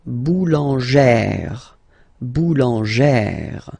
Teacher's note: E plus this accent grave, you pronounce it like E, really open E sound.